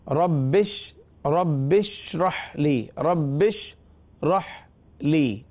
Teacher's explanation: با کو شین کے ساتھ ملا دیں گے